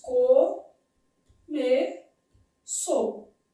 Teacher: O é vogal, o u é semivogal.